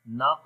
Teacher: قاف کو موٹا بھی پڑھیں گے اور قلقلہ بھی کریں گے جو کہ کمزور قلقلہ ہے